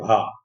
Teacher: भा का जब उच्चारण करते हैं तो दोनों होंठ आपस में स्पर्श करते हैं, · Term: ओष्ठ व्यंजन